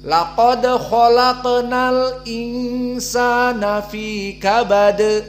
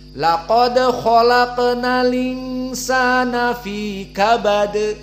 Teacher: Tadi dibaca hamzahnya, sekarang tidak dibaca hamzahnya, menjadi linsana, tapi tetap ikhfa